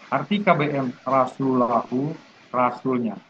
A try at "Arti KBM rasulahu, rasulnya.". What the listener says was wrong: Menurut saya agak cepat dikit, pelan dikit gimana? Dipelankan dikit, kayaknya masih kecepatan. Jadi, kalau tadi kecepatannya 60, ya di 40 lah. Pelan dikit, pelan dikit.